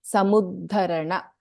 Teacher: ಸಮುದ್ಧರಣ ದ we have both ಅಲ್ಪಪ್ರಾಣ ದ and ಮಹಾಪ್ರಾಣ ದ